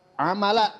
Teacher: di sini adalah mad iwad yaitu panjangnya cuman satu alif dua harakat